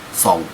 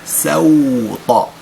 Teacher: السين أحبابي الكرام لا يجب تفخيم السين حتى تصبح صادا فيتغير حتى معنى الكلمة. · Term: السين مرققة